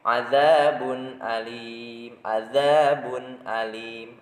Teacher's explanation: Jadi izhar itu jelas, oke? Izhar jelas, tidak boleh memakai qalqalah, tidak memakai gunnah